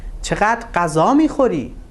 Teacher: the stress is in fact on غذا میخوری